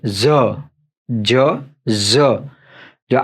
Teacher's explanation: આ જીભ જે છે ને થોડી તાળવે અડે અને થોડી ધ્રુજારી થાય છે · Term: મોટો ઝ